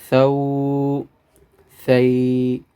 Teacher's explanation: ثا زبر واو ثو. یہ ثا زبان کو اوپر والے 2 دانتوں کے ساتھ لگائیں